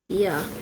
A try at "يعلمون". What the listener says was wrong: Ya. And Ain should be deeper from the middle throat. Ya.